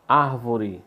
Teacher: Árvore, sílaba tônica, ar, sílaba forte. É a terceira, voltando